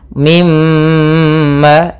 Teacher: syuddidah dan gunahkan huruf mim dan Nun ketika ia bertasdid maka ketika ada mim bertasydid suara mnya atau suara gunahnya ditahan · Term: gunna